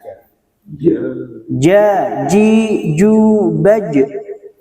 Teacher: Jimnya, Jimnya desisnya ditahan